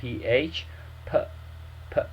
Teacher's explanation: So p is always ph. It's not going to be hard p, okay? It's going to be ph, p, p sound, right?